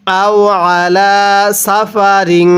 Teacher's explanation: আইনটা গলার মধ্যে চাপ দিয়ে পড়ব।